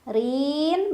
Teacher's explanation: ro dibaca secara tarqik karena barisnya kasrah jadi dibaca tipis lidahnya datar aja Rin Mad Arid sukun karena ada Mad thii bertemu dengan huruf